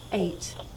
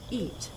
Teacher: it may be difficult to tell the difference between this diphthong a and the long vowel e